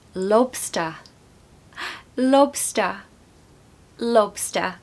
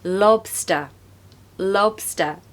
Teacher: you want to stress the first part so lob LOB and then a schwa of course at the end